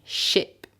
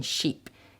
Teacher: when you have a short sound like I as in ship okay some French speakers confuse it with the long sound which is e as in sheep